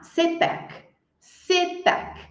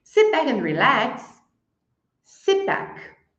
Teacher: se back se back eu elimino o som do T